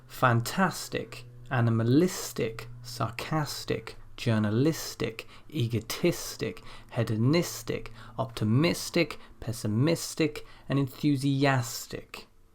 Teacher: So in all of these cases, the stress appears one before the suffix.